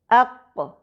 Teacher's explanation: قوف میں ایک پلٹنے کی آواز بھی ہے، اق۔ یہ پلٹنے کی آواز قلقلہ کہلاتی ہے